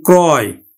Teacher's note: অন্তস্থ থাকার ফলে আদ্য রফলাযুক্ত অটা অ এর মতো উচ্চারিত হবে, ওকার হবে না। তাহলে উচ্চারণ হবে কিন্তু ক্রয়।